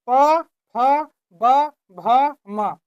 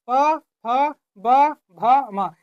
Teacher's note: ओष्ठ व्यंजन यानी कि जिसका उच्चारण करने में ओठ का प्रयोग हो।